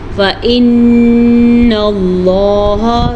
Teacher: نون پہ شد ہے تو غنہ کریں گے، لفظ اللہ کو ہم پر پڑھیں گے کیونکہ لفظ اللہ سے پیچھے والے حرف پہ زبر ہے۔